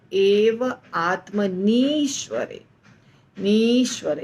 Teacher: तो आत्मनि में छोटी ई है, हर्स्व ई, और ईश्वरे में बड़ी ई है। तो दोनों का जब संधि होता है तो आत्मनि का छोटी ई बड़ी ई बन जाता है ईश्वरे के ई के साथ मिलके, तो हो जाता है एव आत्मनीश्वरे, नीश्वरे यानी दीर्घ ई, बस इतना होता है।